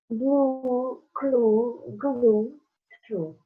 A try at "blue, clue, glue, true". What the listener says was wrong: Bravo.